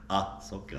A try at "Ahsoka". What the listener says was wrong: Ahsoka. It's A-H-S, not A-S-H. Ahsoka.